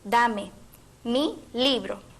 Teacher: la primera sílaba gato y en la oración Dame mi libro el acento recae en la primera sílaba del verbo y del sustantivo · Y en la oración, dame mi libro, el acento recae en la primera sílaba del verbo y del sustantivo, dame, mi libro. El posesivo mi, que carece de acento propio, se une al sustantivo libro, con el que forma un grupo acentual.